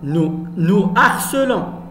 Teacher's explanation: On ne fait pas la liaison. Toujours ici, on a un H aspiré.